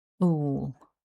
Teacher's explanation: syllable two is the long oo vowel followed by the l sound which together sounds like ool